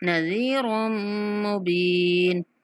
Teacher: را کو میم کے ساتھ ملاتے ہوئے میم پر غنہ کریں گے